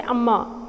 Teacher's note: so I'm stressing on the second syllable